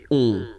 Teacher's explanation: Okay, and then this O-N, so it's a nasal and it goes in your nose and it goes like on. Alright, so you don't hear any N, so it's really on.